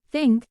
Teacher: Example: think, the theta sound is present in the word think. The tongue tip touches just behind the upper front teeth, and the sound is voiceless with the air being expelled between the tongue and teeth. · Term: voiceless dental fricative